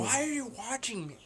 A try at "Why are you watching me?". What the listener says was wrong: Because you're trying to emphasize what you said before instead of just saying it. I know, but you're still trying to emphasize it.